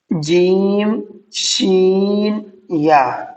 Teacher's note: زبان کا بیچ اوپر کے تالو سے مل کر ادا ہوتے ہیں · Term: مخرج